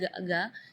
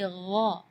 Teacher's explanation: Di ayat ini yang pertama di makhraj huruf ghain ya, ghairil maghdubi ya, perlu diperhatikan, bukan G, bukan huruf G ya, bukan ga, tapi gha. Jadi kalau ga itu dia makhrajnya dari lidah. Ya, tapi kalau huruf ghain itu dari bagian tenggorokan ya.